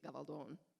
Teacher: there's a long O in the last syllable